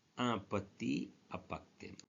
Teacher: There is no link between two words, petit and appartement.